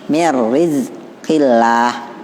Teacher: Masuk tanpa guna, dengung. Nah, jadi dia masuk ke huruf ro-nya. Mir rizqillah. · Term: Idgham bila guna